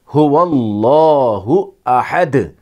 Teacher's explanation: جب زبر آتا ہے تو اس وقت اس اللہ کے لام کو موٹا پڑھتے ہیں، پر پڑھتے ہیں، هو اللہ احد۔